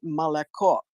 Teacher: the Russian has this elision or sliding schwa of the vowels, o, e. When they're not accented, they're not pronounced.